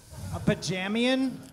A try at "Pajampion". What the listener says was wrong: A Pajampion. A Pajampion. A Pajampion. Pajamian. You kept leaving the most explosive letter out. And also the most champion defining letter.